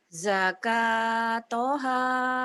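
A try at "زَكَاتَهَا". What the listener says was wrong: Ta, bukan to tapi ta.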